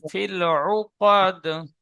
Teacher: আইন পেশ উ, আইন গলায় থেকে উচ্চারণ করবেন